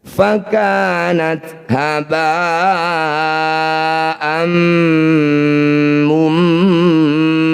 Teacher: Fathah tanwin dihentikan, disebut bacaan mad iwad. Bunyi fathah tanwinnya kita ganti jadi fathah panjang ketika dibaca berhenti.